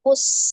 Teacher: Sifat huruf sin adalah asofir. Ya, ada desisan. Asofir itu artinya berdesis.